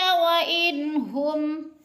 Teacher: نون ساکن کے بعد ہا حروف ہلکی میں سے ہے تو اظہار ہے، اخفا نہیں کریں گے، ناک میں آواز نہیں لے جائیں گے۔